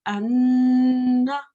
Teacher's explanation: And the noon again, if we were to join the alif maksura to a noon maftu, sorry, alif maftu to noon maftu, it'd be anna. I hope you can hear the sound going into my nose, and you hold it for 2 seconds in order for the nasalization to occur.